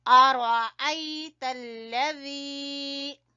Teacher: را کو پر پڑیں گے اور ذی کو کھینچیں گے یا مدہ کی وجہ سے